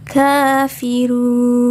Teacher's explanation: Ka di sini terdapat fathah berdiri yang menandakan ini adalah hukum bacaan mad tabi'i. Jadi dibacanya harus panjang 2 harokat atau 2 ketukan.